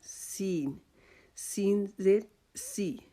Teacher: سین جو ہے یہ بھی ہماری زبان کی نوک جو ہے وہ سامنے والے دانتوں کے ساتھ جڑ کے ساتھ لگائیں گے اور اس کو سیٹی کی آواز میں باریک کر کے ادا کریں گے